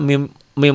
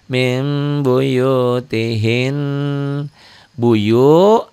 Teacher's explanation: m kayak mesem jangan mim dulu mah mim mim lengkap bukan mim agak bindeng sedikit gitu agak samar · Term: iqlab